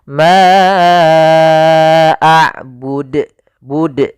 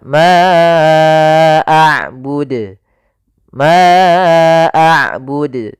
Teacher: Nah, ini tambah hamzah. Harusnya tidak ditambahkan hamzah. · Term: qalqalah